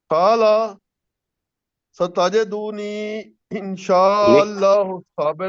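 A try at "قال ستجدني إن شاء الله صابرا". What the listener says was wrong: تال کو چھوٹا رکھیں. ستجدنی.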